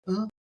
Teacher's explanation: that's ayin beginning a word and I like to do that as I've said before like a guttural stop